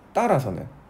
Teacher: 자, 그 다음에 따라서는 따르다죠. 따르에 아서가 붙어서 으가 탈락된 탈락입니다